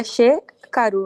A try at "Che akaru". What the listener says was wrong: Che akaru. ponemos el prefijo a. Che akaru.